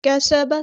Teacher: سین کی سیٹی ہم نے واضح کرنی ہے، با کی زبر کو ہم نے لمبا نہیں کرنا.